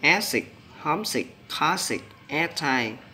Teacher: Tính từ ghép trọng âm rơi vào âm tiết thứ nhất